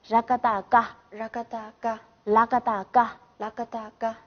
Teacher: 那么这个加上加字的时候，它的这个音就是不变的，不变声调